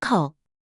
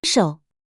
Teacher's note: Third tone falling rising starts low, dips down, then rises up.